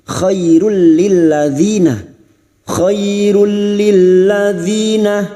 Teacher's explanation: Sebuah nun sukun atau tanwin yang bertemu dengan dua huruf ini, yaitu lam dan ro; Nun sukun atau tanwin yang bertemu dengan dua huruf, yaitu lam dan ro, disebut idgham bila ghunnah, yaitu dimasukkan tanpa dinasalisasi. Khairul lilladzina, kirul lilladzina, " lil" memasuki huruf lam dengan shadda. · Nun sukun atau tanwin yang bertemu dengan 2 huruf yaitu lam dan ro, namanya bacaan idgham bila gunnah, hanya masuk tanpa mendengung